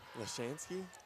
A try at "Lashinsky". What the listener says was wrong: Lashinsky with an I. Lashansky with an A.